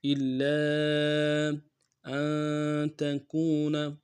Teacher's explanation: حمزہ کو نون ساکن سے ملانا ہے، نون ساکن غنہ کریں گے ، تا کو نون سے ادا کریں گے، کاف کو واو